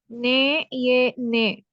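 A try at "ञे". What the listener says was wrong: हाँ, इसको नून से थोड़ा सा अलग कीजिए, ने कीजिए, ने नहीं है यह ने। ने में आप देखें, ने जब प्रोनाउंस करती हैं तो जुबान ऊपर वाले तालु से टच होती है, ने टच हो रही है। आप ने कहें, ने कहें, ने कहें, ये वाला ने टच हो रही है ऊपर वाले तालु से।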